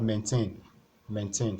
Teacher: since it's a verb you have to stress the second part